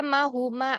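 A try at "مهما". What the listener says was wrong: Mahma, bukan mahuma, tapi mahma.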